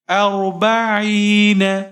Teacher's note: حمزہ کے اوپر زبر ہے اور را ساکن ہے، حمزہ کو را کے ساتھ ملائیں گے، اور را کو موٹا پڑھیں گے۔ با کے اوپر زبر ہے، بغیر کھینچے پڑھیں گے، عین کے نیچے زیر ہے، یا ساکن ہے، یہاں پر آپ یا مدہ کریں گے، یعنی ایک الف کے برابر کھینچ کر پڑھیں گے۔